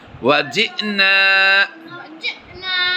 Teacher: یہ حمزہ کے اوپر جزم ہے اس لیے جھٹکا دے کر پڑھیں گے